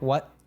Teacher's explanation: So we have what there has a glottal T at the end. So it's like what, as if you're cutting it off at the back of your throat.